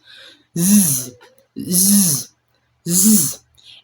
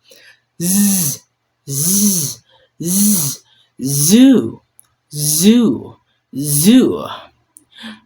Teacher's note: z z z It is the exactly the same mouth shape as s but now the vocal cords should vibrate and buzz because it is voiced.